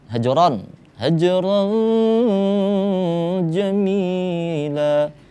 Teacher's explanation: Ada pantulan di huruf jim, hajron, nggak terlalu besar pantulannya. Baca kecil aja, hajron jamila, karena itu huruf jim merupakan termasuk ke dalam huruf qalqalah.